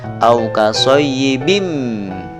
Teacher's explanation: Karena setelah tanwin, di sini tanwin berhadapan dengan huruf idgham bi ghunna berupa huruf mim, maka bacaannya adalah suara bunyi tanwin ini dimasukkan kepada huruf idgham berupa mim. Au kasayyibim, tanwinnya hilang, langsung dimasukkan ke dalam huruf mim.